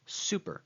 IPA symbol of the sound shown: s